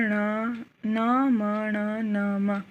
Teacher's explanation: पंचम वर्ण आ जाते हैं इसमें, जो नासिका से बोले जाते हैं